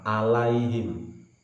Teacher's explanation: ainnya tetap ambil dari tenggorokan tengah. Jangan berubah bunyi menjadi a.